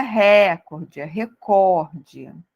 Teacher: então não podemos esquecer essa palavra recorde é uma palavra paroxítona